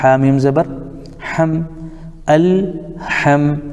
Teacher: اسی طریقے سے ہم دیکھ رہے ہیں ہا کے اوپر زبر ہے لیکن میم ساکن ہے، تو میم ساکن ہے تو ساکن والے حرف کو پیچھے سے ملائیں گے